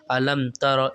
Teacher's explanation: देखिए गुन्ना नहीं हो रहा ना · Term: इज़हार शफ़ी